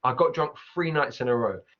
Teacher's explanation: So the F sound instead of th.